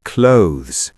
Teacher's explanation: >> It's actually clothes. One syllable and it ends with a thz sound, not just z.